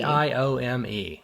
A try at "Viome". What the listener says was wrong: You're kind of saying biome and Viome.